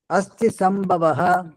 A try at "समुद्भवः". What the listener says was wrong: समुद्भवः சமுద్பவः சம்பவः வராது.